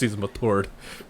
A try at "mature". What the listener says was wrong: The T has to be pronounced because he's mature.